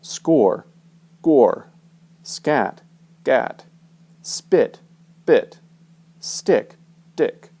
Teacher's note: These unvoiced, unaspirated consonants are going to sound a little bit like hard G, B, and D, but there won't be any vocal cord vibration.